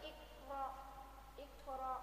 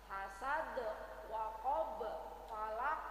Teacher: Jadi kita memantulkan itu harus lebih kuat, lebih biar ada bedanya dengan qalqalah sughra. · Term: qalqalah kubra